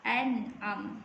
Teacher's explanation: Sebab dia nun yang bertanda sukun berjumpa dengan huruf ain. Nama hukum dia ialah izhar halqi, dibaca tanpa dengung.